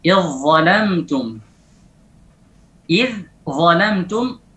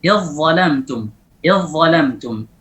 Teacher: Idh zalamtum, lalu diidghamkan, zal diubah menjadi dha, diberikan sifat at-tafkhim, kemudian sifat al-itbaq. Idh zalamtum.